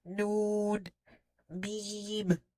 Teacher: And all this pronunciation, the majority of it happening in the nose. · the makharij of Noon and Mim is the nasal cavity, your nostrils, the nose. The sound is held for 2 count or 1 alif. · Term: Gunna